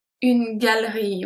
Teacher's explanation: if you pronounce it fast, we say une galerie. We kind of skip the E.